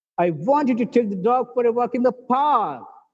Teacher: in the park not on a road not to a market the focus is on park